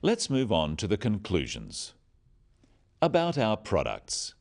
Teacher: Note the downward intonation at the end of sentences.